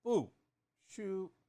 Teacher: that's fourth tone and first tone